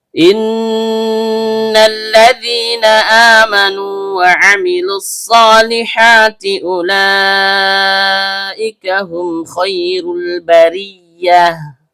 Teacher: Diawali dengan hamzah qotho' atau hamzah berbentuk alif yang keluar dari tenggorokan bagian bawah. Nun, ujung lidah bertemu dengan langit-langit bagian tengah.